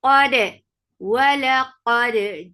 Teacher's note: Qaf is heavy for fatha open jaws attached dal. Dal will be light and it will get a nice qalqala. · First you will attach Qaf with dal with shidda. You will cut off the sound abruptly and then you will open the makhraj to bring in qalqala.